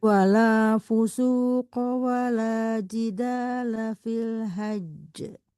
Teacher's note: karena itu kan jimnya tasdid haj ditahan